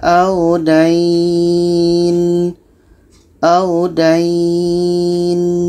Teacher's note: dai ini kita panjangkan 2 harakat baru masuk ke nun mati. Contohnya, yusina biha audain.